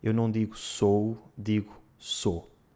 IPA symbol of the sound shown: o